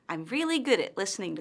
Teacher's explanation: notice how her intonation falls at the end of the statement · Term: falling intonation